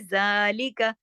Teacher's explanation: जा तो एक लंबा होगा अलिफ के बराबर, लेकिन ली का ये ज्यादा नहीं खींचेंगे